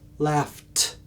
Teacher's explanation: T, no vibration on the T, the end sound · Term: Voiceless